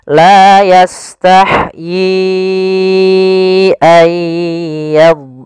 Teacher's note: Ya, di sini kita sebab hamzah, yaitu adanya awalnya yi 2 harokat bertemu hamzah, maka menjadi 4 harokat. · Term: mad jaiz munfasil